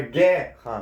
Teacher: guerra é uma paroxítona, certo? Por quê? Porque a penúltima sílaba é a sílaba tônica, a sílaba mais forte.